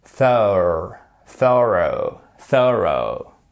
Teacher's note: on a une accentuation sur cette première partie du mot